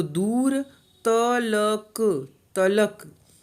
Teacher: दू और र, तो द में ऊ यानी बड़ा ऊ हम बोलेंगे, थोड़ा समय लेंगे। और र खाली है, यानी र में सिर्फ ओ की ध्वनि सुनाई पड़ रही, आ की नहीं।